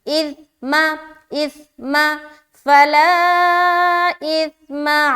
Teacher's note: सा को बहुत ही नरमी के साथ बगैर सीटी के निकालेंगे